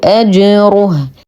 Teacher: نتم ضمه الراء مع التفخيم